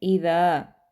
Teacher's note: ذال کے اوپر زبر ہے اور زبر کے فوراً بعد الف مدہ ہے، تو ہم اس کو 2 حرکات کے برابر لمبا کریں گے، ٹھیک ہے۔ اذا، ٹھیک ہے، یہ اذا نہیں ہے، اذا، دا کو لمبا کریں گے۔